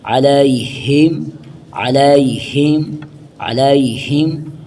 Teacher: علیہم علیہم علیہم عین زبر ع، لام یہ زبر لائی، یہ حروف لین ہے، اس کو جلدی سے ادا کرنا ہے